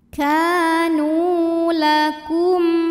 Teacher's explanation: Maka huruf kaf panjang 2 harokat. Kanu, nu juga sama mad tabi'i zahiri, karena ada waw sukun yang didahului baris dhammah. Maka huruf nun panjangkan 2 harokat.